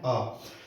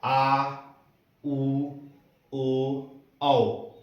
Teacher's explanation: अ होता है मध्य स्वर, लेकिन आ होता है पश्च स्वर